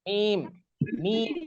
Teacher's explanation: মিম, ঠোঁটের শুকনো জায়গা থেকে মিম, মিম একদম শুকনো জায়গা থেকে বা।